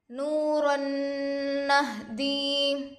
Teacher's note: واو ساکن سے پہلے پیش ہے، واو مدہ ہوگا، تھوڑا کھینچیں اور معروف پڑھیں۔